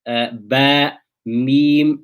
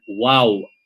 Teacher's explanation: ينطبقان for the meme and the ba, i.e. one lip on top of the other, they come in contact.